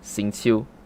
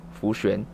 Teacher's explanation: X is pronounced with a sharp hissing S sound, and then XU is pronounced with a lower harsh SH sound. Again, the difference between X and XU is the difference between S and SH.